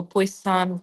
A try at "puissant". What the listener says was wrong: I would say more puissant. Puissant, not puissant, but first syllable. Puissant.